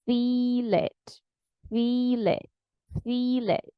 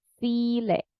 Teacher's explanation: we have this long E in feel and the short E in it